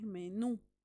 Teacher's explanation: Entonces, el acento se va a concentrar en la última sílaba. Esta palabra tiene dos sílabas, menú. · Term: sílaba tónica